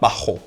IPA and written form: ˈba.xo (bajo)